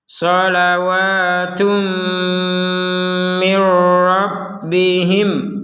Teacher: Ada tanwin bertemu mim maka kita masukkan tanwinnya kepada huruf mim disertai dengungan.